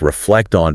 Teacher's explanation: Listen for how sounds link together like reflect on becoming almost one word.